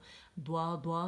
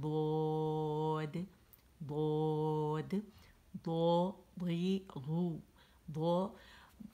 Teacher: पूरी हमारी जो ज़बान है ना ये जाके ऊपर दाढ़ों को लगती है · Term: दौत